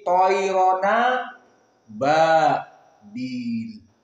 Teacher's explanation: Dihilangkan hamzahnya dan harokatnya dimasukkan ke nun yang sakinah. Jadi tadinya toiron sukun nun, kemudian aba hamzah fathah, maka hamzahnya dihilang. Aba hilang, tinggal ba. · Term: an-naql